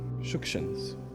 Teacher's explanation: I say the surname with the emphasis on the first syllable because that's the correct way to pronounce it.